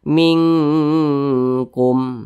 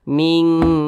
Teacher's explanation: didengungkan ditahan dulu atau dipanjangkan suaranya kira-kira dua ketukan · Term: ikhfa Hakiki